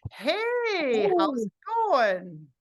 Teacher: gonna hold the E out on hey